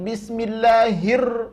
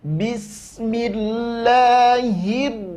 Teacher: Langsung nampakkan, berikan sifat inhiraf dari ro, maka dia tak akan bergetar